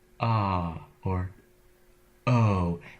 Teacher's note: vowel sound so I go from silence to or oh and the reason that vowel can come out is because that glottal stop gets released I let the air through to begin the vowel the best